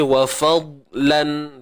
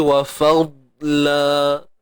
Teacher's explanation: tukarkan bunyi tanwin kepada mat dua harakat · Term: iwad